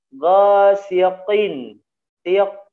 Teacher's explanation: ko-nya dalam keadaan kasroh ya, kalau tidak tebal ya akan menjadi huruf k.